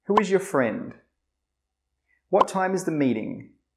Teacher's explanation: The intonation does not go up like it does with the yes or no questions.